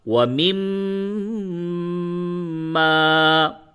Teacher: ناک میں آواز کو روک کر کے گنگنائیں گے، اسی کو غنہ کہتے ہیں.